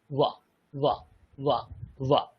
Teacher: উপরের দাঁত নিচের ঠোঁট, উপরের দাঁত নিচের ঠোঁটে স্পর্শ করে উচ্চারিত হয়